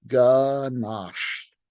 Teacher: It's mandatory to stretch out the SH sound at the end of the word.